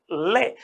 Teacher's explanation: तो केवल ऐसा एक व्यंजन है ले, आप उच्चारण करेंगे ले, तो ले का जब उच्चारण करेंगे तो जीभ का अग्रभाग आप मूर्धा की तरफ ले जाकर के प्राणवायु को दोनों तरफ से बाहर निकालेंगे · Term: पार्श्विक